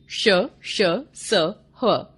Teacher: ऊष्म व्यंजन। इनका उच्चारण करते समय हवा मुंह में बहुत अधिक रगड़ खाने के कारण थोड़ी ऊष्म यानी गर्म हो जाती है, इसलिए इन्हें ऊष्म व्यंजन कहते हैं।